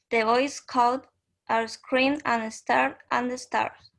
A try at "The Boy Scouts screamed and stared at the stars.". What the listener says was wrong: Okay, good. So this ED is very subtle.